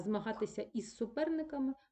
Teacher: вживати прийменник з А у нас чомусь із а тому що починається слово із свистячого с і нам важко вимовити з і с поряд